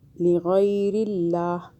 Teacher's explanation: اللہ باریک ہو رہا ہے، اللہ سے پہلے زیر آ رہا ہے